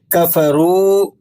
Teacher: کفروا واو مدہ ہے تو اسے آپ 3-4 حرف تک کھینچ لیں گے